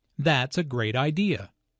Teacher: Notice the emphasis on great.